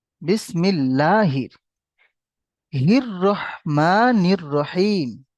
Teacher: আলিফ লাম র মুসাদ্দাদ, র মুসাদ্দাদ আলিফ লাম শামসির অক্ষর, শামসির র এসছে, সেহেতু আমরা আলিফ ও লাম দুটোই বাদ দিয়ে হা কে র সাথে যুক্ত করে পড়বো আমরা।